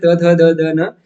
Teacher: जहां पे जीबा दंत से टकराती हो तब इनका उजन होता है